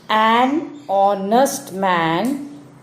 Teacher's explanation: H in honest is silent. The word begins with the vowel sound O.